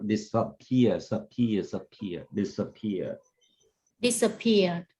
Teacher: So you stress on the second syllable.